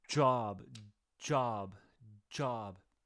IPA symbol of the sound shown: dʒ